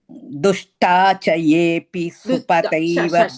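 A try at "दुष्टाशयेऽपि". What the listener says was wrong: Sha. Not cha. Sha. Dushtasha. no, cha. At least I am hearing it as a cha, Bhagini. You are saying as a cha.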